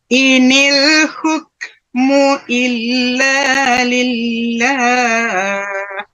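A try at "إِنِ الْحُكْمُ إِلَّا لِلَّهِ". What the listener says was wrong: Betul.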